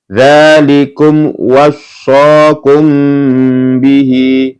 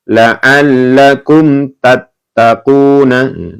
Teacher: Dzalikum wassakum bihi. Nah, ini mim sukun bertemu dengan ba dibaca mendengung.